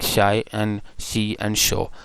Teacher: these sounds are made at the boundary between the alveolar Ridge and the hard palate